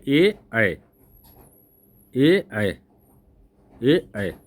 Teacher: कंठोस मतलब कंठ और ओठ, सॉरी ए दैतो है ना, ए और अय का उच्चारण स्थान कंठ और तालु से होता है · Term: कंठ तालु